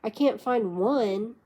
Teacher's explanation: falling tone on can't